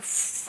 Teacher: फ इंग्लिश में फ देख रहे हो फ यानी हवा निकल रहा है दोनों होठ के बीच में से चिपक नहीं रहा है